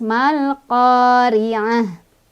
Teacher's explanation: Tak marbutoh kalau berhenti jadi ha ya. Ha sukun. Di sini ada wakof.